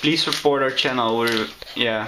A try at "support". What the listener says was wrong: Report? No, don't report. Support. You said report.